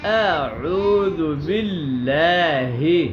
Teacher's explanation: ہاں جی باللہ کے لام جو ہے نا یہ باریک ہوگی, ٹھیک ہے, باللہ کی بجائے باللہ. ہاں ہا کی آواز جو ہے سینے کی طرف سے آئے گی